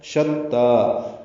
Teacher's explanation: جمیعا وقلوبهم قاف پر پڑھیں گے، لو واو مدہ ہے، ہم میں میم ساکن پہ اظہار ہے. شتا شین کو تا سے ملا دیں گے، تا کھڑا زبر ہونے کی وجہ سے دو حرکات لمبا کریں گے